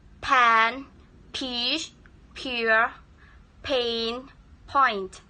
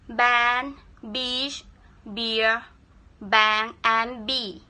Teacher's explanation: The p and b sounds are often studied as a pair because both sounds are produced in the front of the mouth with the tongue in the same place. The only difference is that the b sound is voiced and p sound is voiceless.